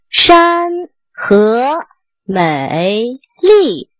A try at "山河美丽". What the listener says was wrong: 这 个 美 又 开 始 拖 ， 美 美